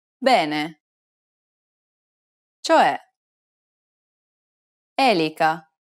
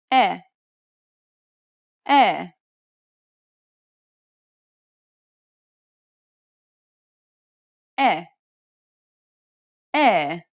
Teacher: It's identical to the E sound in the word red. This is an open sound, so be sure to widen your mouth.